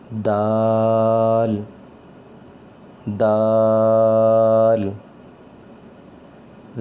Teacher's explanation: آواز اس کی سخت ہوگی اور اس کو مد کر کے پڑھنا ہے